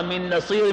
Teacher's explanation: من نصیر میں پہلا نون نہیں پڑھا جائے گا